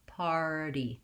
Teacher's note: So I'll rewrite that like par, D. The stress is on the first syllable, so I have time and length to say my par to get my R diphthong. Party. And then I have a light touch on D.